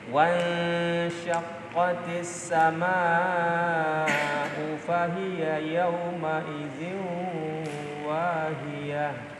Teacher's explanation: wan nun mati disambung oleh shin ya, sehingga nunnya disamarkan ya, kemudian didengungkan tahan 2 rakaat. Wan, jadi bukan wan tapi wan disamarkan nunnya.